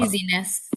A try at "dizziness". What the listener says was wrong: Dizziness. So it's a little bit longer on the I here. dizziness, because originally the when it's not a noun, it's an adjective with a Y, dizziness.